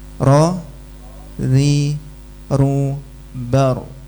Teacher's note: Yang ro tebal, yang ri tipis, yang ru tebal lagi.